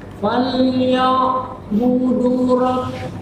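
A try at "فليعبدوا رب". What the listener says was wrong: Du-nya panjang, Pak. Du.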